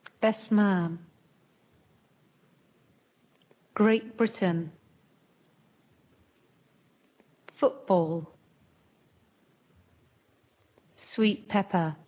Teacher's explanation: T sounds more like P listen and repeat best man Great Britain football sweet pepper the